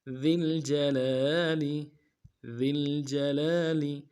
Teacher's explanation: ذال کو لام کے ساتھ ملانا ہے، ذال کو باریک کریں گے اور جیم کو نون سے ادا کریں گے.